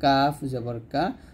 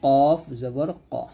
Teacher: কাফটা হালকা করে উচ্চারণ করবেন, কাফ জবর কা। আর কফটা মোটা করবেন, কফ জবর ক এরকম ভাবে।